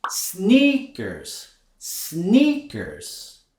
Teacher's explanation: we also want to raise our intonation on that first syllable